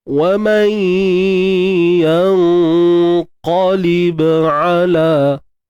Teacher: Ba yang sukun ni tuan-tuan dan puan, kita lantunkan kat sini qalqalah sughra.